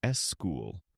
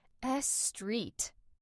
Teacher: I need a vowel to help me. So you instinctively add a little e sound at the beginning. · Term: prosthetic vowel